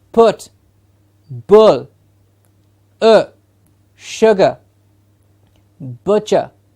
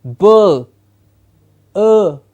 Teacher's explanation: it's nearly what we said a schwa nearly but we will not classify it as a schwa because it is a longer sound